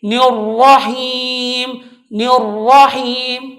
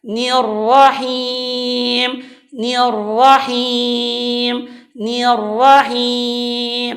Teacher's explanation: Nah, ini pun salah karena ni ini dibacanya tipis, ni-nya yang tipis sedangkan ra-nya tebal. Maka bacaan yang benar adalah nirrahim, nirrahim, nirrahim.